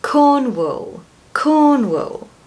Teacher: Can you hear that schwa in the second syllable? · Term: schwa sound